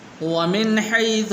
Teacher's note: یہاں پر بھی غنہ نہیں کریں گے اس لیے کہ آگے ہا حروف حلقی میں سے ہے